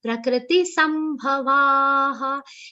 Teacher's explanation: Sa has a prominent aghat of ma.